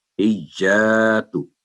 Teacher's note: हिज्जा क्योंकि आगे अलिफ है तो स्ट्रेस के बाद आगे 2 सेकंड लंबी करेंगे